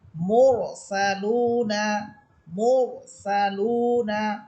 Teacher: সাকিন তার পূর্বে পেশ এজন্য র হরফ মোটা হবে মুরসালুনা মসালুনা এভাবে তাহলে আমরা র হরফ মোটা করে পড়তে করতে হবে।